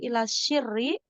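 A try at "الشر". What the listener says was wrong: Ila syarri. Bukan ya, syarri bukan syiri. Kalau sa pakai sa, sirri ya. Kalau pakai sin, sirri. Tapi kalau syarri. sir itu rahasia.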